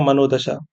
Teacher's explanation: विसर्ग प्लस घोष वर्ण मिल जाए। ठीक है? तो विसर्ग के स्थान पर ओ निर्मित हमें देखने को मिला।